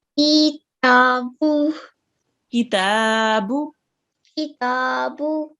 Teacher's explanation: So ki, 1 count, ta, 2 counts, and bu, 1 count.